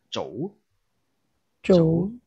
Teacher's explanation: this z sound when it is before a round vowels o, it is pronounced something like church